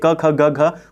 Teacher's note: क वर्ग के अंदर जितने भी वर्ण हैं आपके क ख ग घ, वो सब क से यानी कंठ से बोले जाएंगे।